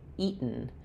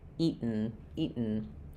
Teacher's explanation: So it sounds like e. And then you're not really hearing that t, not eat with a burst of air, but rather you hear the t because I stop the air as though I'm making a t eat. And then my tongue is there ready to make go right into the sound of the n eaten. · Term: unreleased or stopped t